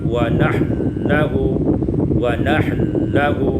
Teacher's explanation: Pada ayat 133 wa nahnu lahu, idghamul nun fil lam, ya, kita baca diidghamkan nun pada lam sehingga kita baca wa nahlahu, wa nahlahu.